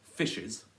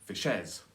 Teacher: So we can see that the stress is on fish and the soft unstress is on es.